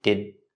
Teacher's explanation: So the D at the end of did is a stop D.